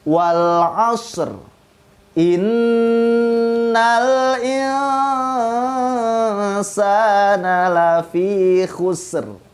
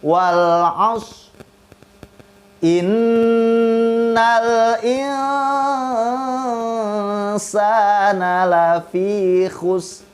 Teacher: huruf sin di ayat kedua atau huruf shod di ayat pertama itu bukan merupakan huruf qalqalah. Jadi tidak boleh dipantulkan.